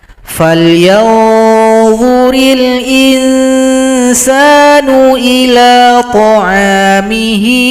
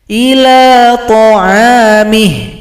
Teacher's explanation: kalau berhenti, maka ketentuan dalam ilmu tajwid ha dhamir ini disukunkan